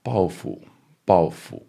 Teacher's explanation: 报 复 with the fifth tone on the 复